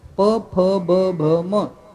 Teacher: ओष्ठव्य प वर्ग सगळा ओष्ठव्य आहे. प, फ, ब, भ, म हे सगळे ओठ एकमेकांना जोडल्याशिवाय आपल्याला बोलता येत नाही.